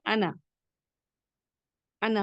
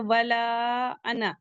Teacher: ये लफ्ज़ अना के बाद का अलिफ नहीं पढ़ा जाता। कहीं नहीं पढ़ा जाएगा।